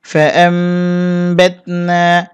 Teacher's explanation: কারণ নুন সেকিনের উপরে বা আসছে এই গুণটির নাম ইকলাব গুন্না নুন সেকিন অথবা তানবিনের উপরে যদি বা আসে তাহলে কিন্তু সেখানে ওই নুন সেকিন অথবা তানবিনকে মিম দ্বারা পরিবর্তন করতে হবে এই যে ছোট করে একটা মিম দেওয়া আছে এই নুনকে মিম